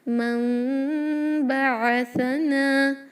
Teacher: عین کلیئر، سا میں نو وسلنگ ساؤنڈ